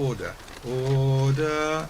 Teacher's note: you don't really want to do the r at the end of order order and it's a kind of a glottal stop rather than